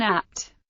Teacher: In English, for example, there are stops with no audible release, such as the p in apt.